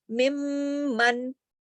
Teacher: ہم نے میم کو میم سے ملا دیا، من. ٹھیک ہے، اور غنہ بھی ہو گیا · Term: ادغام